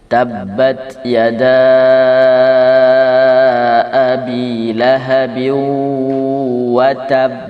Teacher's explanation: benar-benar disukunkan dulu, baru kemudian qalqalah yang muncul, qalqalah yang paling besar